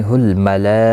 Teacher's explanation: ملا یہاں پر مد متصل ہے، 4 الف کی مقدار کے برابر کھینچ کر پڑھیں گے